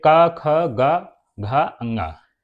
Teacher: ठीक, ये क, ख, ग, घ, अंगा, ये हमारे आवाज निकलती है एकदम कंठ से, तो इनको हम लोग कंठ व्यंजन कहते हैं